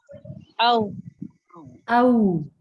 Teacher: پورے ہونٹوں کو آپ گول کر کے پروناؤنس کریں گے تو یہ صحیح ادا ہوتا ہے